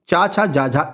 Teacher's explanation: क्यों? क्योंकि इनके उच्चारण में स्पर्श के साथ साथ रगड़ भी होता है, इसलिए हम इन्हें क्या कहते हैं? स्पर्श संघर्षी कहते हैं।